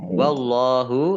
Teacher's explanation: Allahnya dibaca tebal karena harokat di depannya fathah lam fathah berdiri Mad thobii panjang 2 harokat yang lain ya